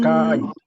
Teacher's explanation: Porque en el griego, aunque la I lleva el acento, cuando lo hablamos, el acento lo tiene la vocal anterior. Esto sucede solo cuando es un diptongo, Diptongo.